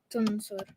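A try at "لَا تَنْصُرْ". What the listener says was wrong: la, not. Why are you saying tun? La tansur.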